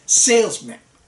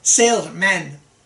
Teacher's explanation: the first syllable is stressed so you say salesman and we do not stress the rest